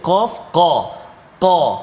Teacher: Qaf duduk pangkal lidah belakang, dekat dengan anak sulung, bukan dekat dengan anak tekak. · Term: huruf qaf